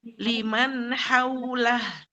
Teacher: H ini temannya ain ya. Makhrajnya jelas di tengah huruf tenggorokan.